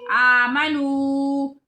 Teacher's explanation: واو ساکن ہے، پہلے حرف کے اوپر پیش ہے، اس کو ایک الف کے برابر لمبا کریں گے